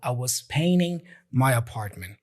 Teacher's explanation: He's not pronouncing the T there. The T is completely dropped.